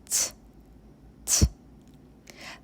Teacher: When we pronounce its sound ts, the tip of the tongue touches alveolar ridge. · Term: aspirated consonant